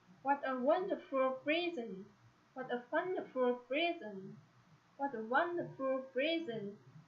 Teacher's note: Acclamatory sentence. With acclamatory sentence, we have to bring voice down at the end of sentences.